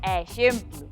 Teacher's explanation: Pois eu digo exemplo. A pronuncia habitual é con E aberto e E pechado por influencia da nasal, exemplo, aínda que en determinadas zonas chegan a pronunciar esta palabra con dous Es abertos.